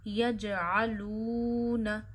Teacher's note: آئین گلے کے درمیان سے ادا کریے اور آئین پہ زبر آپ کو کھینچنی نہیں ہے، کبھی بھی آپ زبر زیر پیش کھینچتے نہیں ہیں۔